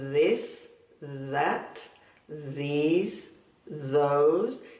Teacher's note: La undécima regla es la th, que se puede pronunciar como un sonido parecido a la Z de Castilla suave y sonoro. Es decir, que la garganta y la boca vibra suavemente al hacer el sonido. Si ponemos los dedos en la garganta y vibra, la lengua, la boca puede vibrar también suavemente.